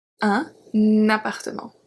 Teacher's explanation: we add a liaison between un and appartement because appartement starts with a vowel